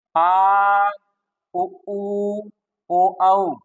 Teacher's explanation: शेष जो भी आपके रह जाते हैं आ उ ऊ ओ औ ये फर्स्ट भाग से आ पीछे से आई और उ ऊ ये भी अंदर से आई पीछे हिस्से से ओ औ जो साउंड निकलेगा वो पीछे से निकलना है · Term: पश्च स्वर